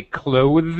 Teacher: clothes is actually the proper and correct way to say clothes with a th sound a voiced th sound